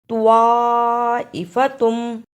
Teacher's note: توا کی جگہ پر تا کی آواز نہیں آنی چاہیے، توا کو موٹا پڑھنا ہے